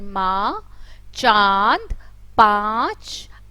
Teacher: इन स्वरों का उच्चारण नाक और मुंह से होता है। जब हम कोई भी शब्द का उच्चारण करते हैं और उसका उच्चारण करते समय वो उसकी ध्वनि जो है नाक से भी निकलती है और मुंह से भी निकलती है, कंबाइंड होकर निकलती है, तो उसे अनुनासिक स्वर कहते हैं।